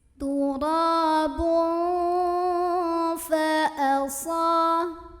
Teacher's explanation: Turabun fa'asa, sa mad tabi'i karena ada alif sebelumnya fathah, maka cara membacanya huruf shad yang baris fathah ini dipanjangkan dua harokat saja